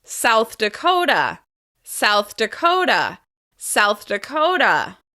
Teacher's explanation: we're going to stress the second syllable of the second word.